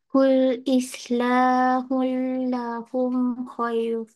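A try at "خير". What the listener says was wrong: Khair panjang sikit.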